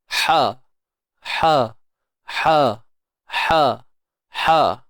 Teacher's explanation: Kalau H pedas tengah kerongkong